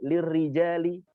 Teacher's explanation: Tidak boleh lirrijali, itu berat sekali. Padahal ra ketika dia berharokat kasrah dia harus tipis. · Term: sifat tarqiq